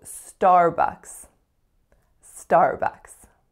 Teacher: that second vowel is uh as in up